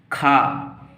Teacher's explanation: खा जीभ की जड़ से उच्चारित होती है। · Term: जिह्वा मूलीय